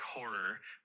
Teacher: The word horror is typically pronounced like horror with the emphasis on the first syllable.